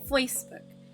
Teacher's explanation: So it sounds like there's an F and W kind of put together.